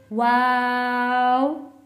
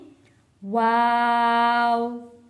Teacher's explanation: होठों को गोल करके लफ्ज शुरू होगा और वाव को खत्म करते हुए भी होंठ हमारे गोल रहेंगे।